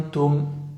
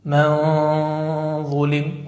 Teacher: الغنة مفخمة, ليش؟ لأنها جاء بعدها حرف مستعل